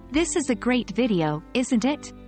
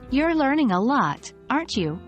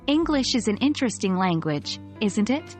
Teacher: remember your voice should go down at the end of these sentences indicating that you're certain of what you're saying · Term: falling intonation